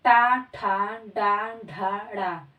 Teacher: इनका जो उच्चारण स्थान है दोस्तों वह है मूर्धन्य